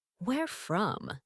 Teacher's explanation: ask yourself where from in a rising tone